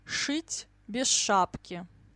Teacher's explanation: СШ, ЗШ always like ш, the long ш